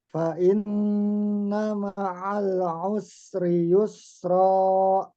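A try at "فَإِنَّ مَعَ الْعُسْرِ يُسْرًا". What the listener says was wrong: Nah, lamnya sedikit mantul tadi. Ma'al u ma'al usri yusra.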